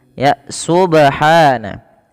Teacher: Pada lafal ba di sini ada bacaan qalqalah yang dimana ba-nya ini perlu kita pantulkan ya teman-teman.